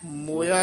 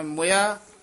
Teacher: ਮੋਇਆ ਨਹੀਂ ਕਹਿਣਾ ਮਮੇ ਔਂਕੜ ਨਾਲ ਮੁਇਆ ਛੇਤੀ ਬੋਲਣਾ